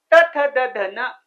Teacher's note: जिभेचा दातांना स्पर्श होतो